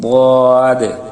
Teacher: বাম পাশে উপরের মাড়ির দাঁতের সঙ্গে গোড়াটা মিশিয়ে তারপর বদের উচ্চারণটা মোটা করে উচ্চারণ করার চেষ্টা করবেন